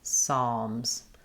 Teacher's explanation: The Z, the S sound at the end is a Z. Psalms. The P is also silent, so we just start on the S sound. · In Psalms, the L is silent, but it affects how we say the ah vowel. It's a little bit more dark.